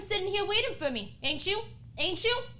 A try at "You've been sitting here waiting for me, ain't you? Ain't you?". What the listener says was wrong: Too fast.